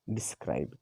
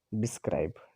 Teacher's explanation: unstressed syllable followed by stressed syllable as in describe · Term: एम्ब